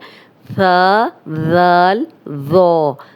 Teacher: सा जो है वो उसमें सीटी की आवाज़ नहीं आनी, इन तीनों हरूफ में सीटी की आवाज़ नहीं आएगी। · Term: नरम हरूफ